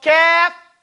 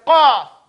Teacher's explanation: the calf, it should be up in the top of your mouth, closer to the front. And the qaf is in the back.